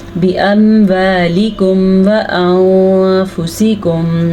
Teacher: फिर से हमने नून को छुपाया क्योंकि यहाँ पे इख्फा का कायदा हो रहा है